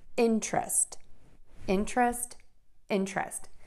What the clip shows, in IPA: ˈɪntrəst